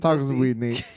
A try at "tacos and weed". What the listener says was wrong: Your tone's so monotone. It sounds like he's in the building, like you're scared. No, that was so monotone. It sounded like you were scared.